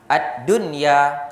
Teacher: baca dengan izhar mutlak, tak boleh baca dengung. Tak boleh baca dengung.